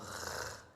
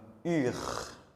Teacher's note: ça va être avec le fond de la gorge. C'est comme si on va faire passer le vent, l'air entre la gorge et la langue et faire comme R, comme UR. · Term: le son R